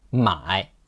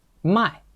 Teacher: When we are talking about 买 buy, we have to be careful about the tone, because if you change it to the fourth tone, it will become 卖 sell